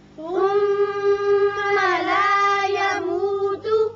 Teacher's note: میم مشدد ہے، غنہ کیجیے۔